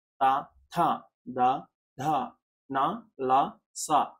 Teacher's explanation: వీటన్నిటిని కూడా మనము దంతాల సాయంతో పలుకుతున్నాం. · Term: దంత్యాలు